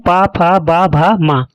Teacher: अगला नंबर है ओष्ठ। जो ध्वनियां दोनों होठों के स्पर्श से उत्पन्न होती हैं उन्हें ओष्ठ्य ध्वनियां कहते हैं।